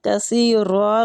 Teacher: را زبر کی وجہ سے پر ہو رہا ہے